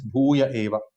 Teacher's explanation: Bhuyah Eva becomes Bhuya Eva. The Visarga goes missing. Visarga Lopa Sandhi.